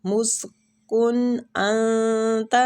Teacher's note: ادھر انتا میں اخفاء حقیقی ہو رہا ہے، نون کو چھپائیں گے